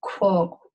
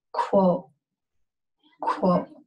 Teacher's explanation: It's a Q sound. So it's this Q is further back in your throat, but then you have this rounded out sound